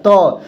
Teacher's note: जब आप इसको उच्चारण करेंगे अपने मुख से तो त हो गया, थ हो गया जो जीहवा आपकी है ना आपके दांत पर लग रही है